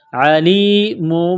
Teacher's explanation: عین کو گلے سے نکالیں گے زور لگا کر